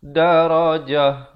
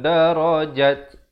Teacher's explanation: Kalau datang di akhir ayat ataupun kerana kita waqaf pada ta marbutah, maka ta itu ditukarkan kepada ha.